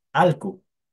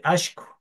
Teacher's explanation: en el sur, la doble L tiene un sonido de SH.